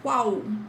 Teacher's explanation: This L in the end of syllables has a different sound from English, because in English we usually pronounce the L like L, milk, for example, milk. However, in Portuguese, this L in the end of syllables, it's like U.